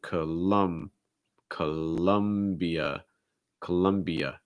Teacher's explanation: you get like an unstressed schwa followed by a stress schwa